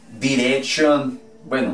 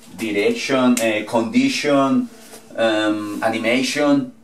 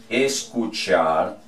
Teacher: Se escribe tion y se pronuncia shon.